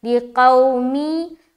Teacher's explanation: کے بعد لام زیر لی، قاف واو زبر قو، یہاں پر واو ساکن، اس سے پہلے زبر، یہاں پر پھر ہم واو لین کر رہے